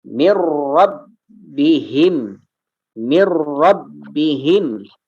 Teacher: tanwin bertemu dengan huruf ro maka masuk dan tidak ditahan